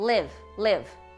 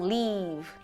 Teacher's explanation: É um I mais curto também, ele é mais curto e menos tenso, ou seja, ele não é assim, sorrindo. Ele é com a boca um pouquinho mais neutra.